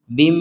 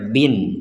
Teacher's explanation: ada tanwin bertemu mim maka kita masukkan tanwin ini kepada mim sehingga terbacanya Bim [Musik] jadi jangan dibaca bin Jangan dibaca bin